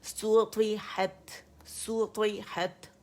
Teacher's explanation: سین ہے نا تو سو کی آواز آنی چاہیے دمہ گولائی کے ساتھ